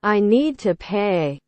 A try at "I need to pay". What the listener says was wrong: No, em đọc như vậy nó thành một cái âm rồi, không phải chữ nữa. I need to pay.